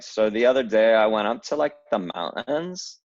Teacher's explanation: so there's a glottal stop on mountains